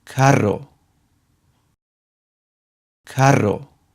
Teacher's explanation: For words that have a strong R sound that is not at the beginning of a word, we use the double R, which has also a rolled R sound